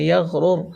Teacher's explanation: یغ نہیں بولیں گے، یغرر کا. را پیش رر، یہ دونوں را کو پر پڑھیں گے. یغرر.